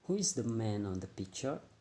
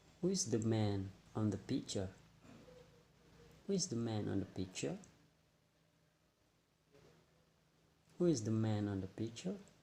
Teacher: we can stress in who, and then man, and also the last is picture, because that syllable is the most important in this sentence